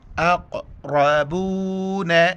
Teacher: بڑی قاف ہے موٹا کر کے پڑھیں گے